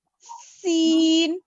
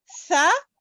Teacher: सीन में जबान अंदर रहती, सा में जबान दांतों पे आती, सा सीन, सा सीन।